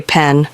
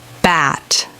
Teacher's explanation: put your hand in front of your mouth and say pen you will feel a puff of air your throat does not vibrate when you say p put your hand on your throat and say p you won't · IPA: /p/